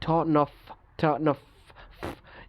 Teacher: জিহ্বা যখন আমরা কি করি, আমাদের আলভেলার রিজের সাথে ধাক্কা দিই, দেখা যাচ্ছে এটা উপরের দিকে আমরা প্রেশারটা দিচ্ছি।